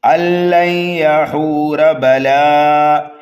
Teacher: را کو تو ہم جلدی پڑھیں گے لیکن را کو پر پڑھیں گے